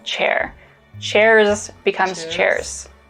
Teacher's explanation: voicing we use the voiceless equivalent which is an s so the z sounds at the end of words turn into more of an s sound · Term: devoicing